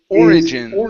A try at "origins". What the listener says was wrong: give a good r instead of or